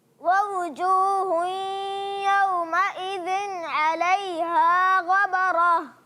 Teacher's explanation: یومئذ میں غنہ نہیں کریں گے، اظہار حلقی کا قاعدہ ہے